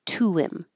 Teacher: This is where we can use H deletion on pronouns that begin with H. Get rid of the H and connect the U to the him.